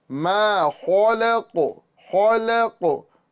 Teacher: लाम को पुर नहीं करेंगे लाम को बारीक करेंगे